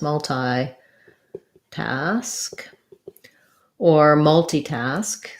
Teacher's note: think that has first syllable stress multi task or multitask again both of them are stressed on the first syllable